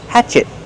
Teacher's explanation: Use a stop T. Stop the air. Hatchet. Not hatchet, but hatchet.